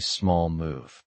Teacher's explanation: The L in small carries into move, making small move. This connected speech makes it sound fluent.